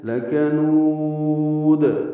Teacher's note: واو مدہ ہے، اس کے بعد دال ساکن ہے تو مد عارض للسکون ہے